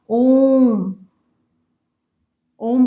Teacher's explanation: ओम को बोलने में जो ध्वनि उच्चरित होती है उसमें प्लुत जितना समय लगता है, यानी दोनों से ज्यादा समय लगता है